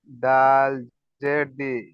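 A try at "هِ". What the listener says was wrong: দাল নয়, হা আছে, হা। হা জের হি।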